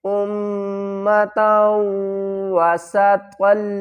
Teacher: حمزہ کو میم سے ملائیں گے اور میم کے اوپر غنہ کریں گے، میم مشدد ہے